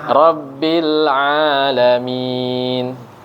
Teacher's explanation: Pakai ain ya, bukan pakai hamzah.